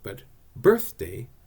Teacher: But birthday is not. The stress or accent in that word is on the first syllable.